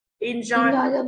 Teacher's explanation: Enjoy vào tiết thứ hai ạ.